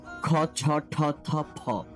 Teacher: ক, চ, ট, ত প দ্বিতীয় ভাগে রয়েছেগুলো। এগুলো একটু ছেড়ে দিয়ে এবং শ্বাসটাকে বাহিরে বের করে উচ্চারণ করতে হবে।